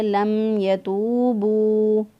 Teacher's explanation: میم ساکن کی آواز کو ظاہر کر کے پڑھیں گے ۔ لم یتوبو نہیں پڑھیں گے، اگر ہم لم کریں گے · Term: اظہار شفوی